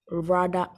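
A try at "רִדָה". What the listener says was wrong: There you go, rida, not rada, rida.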